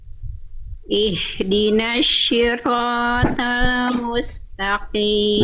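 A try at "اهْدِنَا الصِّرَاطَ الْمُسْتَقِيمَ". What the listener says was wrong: Nah, ini ada kesalahan besar. Shin, jangan shin, bukan shin, tapi sod. Jadi sod itu dilafalkan. Kalau yang tadi Bunda lafalkan itu shin. Ihdinas shi. Bukan ihdinas shi Bunda, tapi ihdinas shi.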